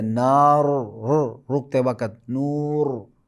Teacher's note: رائے ساکن ماقبل الف مدہ ہو، جیسے نار، رکتے وقت نور، اس را کو موٹا پڑھیں گے